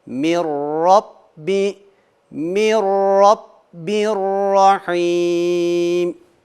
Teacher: sakin nundan sonra ra harfi geldi idam bilne uygulamasını gerçekleştireceğiz yani gunnesiz idam